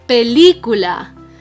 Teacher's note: The strongest syllable is the third to last. That's why we call it una palabra esdrújula.